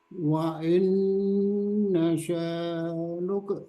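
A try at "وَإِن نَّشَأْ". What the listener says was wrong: Jadi jangan di delay. Wa inna sya. langsung ke hamzah sukun.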